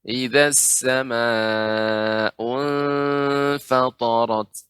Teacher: pada huruf fa ini dibaca dengan tipis, tidak isti'la.